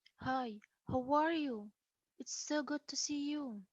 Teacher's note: you may hear a rise fall in a very friendly greeting